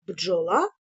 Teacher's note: в слові бджола Дж означає один звук і діти він у нас буде приголосним твердий